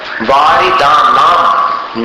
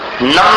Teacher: अब देखिए दूसरी पंक्ति का जो उच्चारण है वारिदानाम, नाम बोलना है इसको, नम नहीं बोलना।